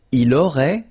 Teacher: final T is not pronounced